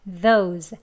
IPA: ðoʊz